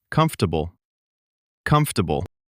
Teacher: that middle syllable just disappears in natural speech. · It looks like it has four syllables. Comfortable. But most native speakers say it in three.